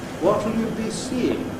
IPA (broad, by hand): w.ɒ.t.l j.u b.i s.iː.ɪ.ŋ